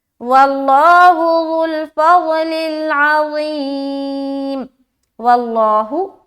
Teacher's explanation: लफ्ज़ अल्लाह को मोटा रखेंगे, वाव के ऊपर ज़बर आ गया